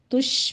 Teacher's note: شین پر تفشی کریں گے، اس کی آواز پھیلے گی